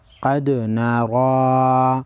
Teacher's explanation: قاف حروف مستعلیہ ہے، موٹا پڑھیں گے، را پر زبر ہے، موٹا پڑھیں گے، دال ساکن پر قلقلہ کریں گے۔